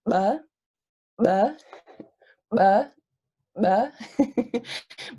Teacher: My glottis is going down and pulling air pressure into my mouth when I'm making what otherwise would be like a B sound. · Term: bilabial voiced implosive